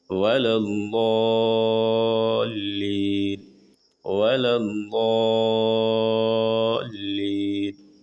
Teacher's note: ضاد ضاد. داد نہیں پڑھنا، جاد نہیں پڑھنا، ضاد موٹی آواز سے ادا کریں گے، جیسے ہم لوگ پڑھتے ہیں سورہ فاتحہ میں وَلَا الضَّالِّينَ وَلَا الضَّالِّينَ.